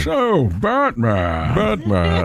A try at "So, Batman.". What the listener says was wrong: So, Batman. So, so you're doing something with the S is changing.